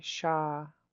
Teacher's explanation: So this one's a long and low A. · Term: low tone